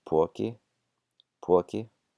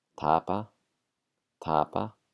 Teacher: at the beginning of words it's an aspirated P, and in the middle it's an unaspirated.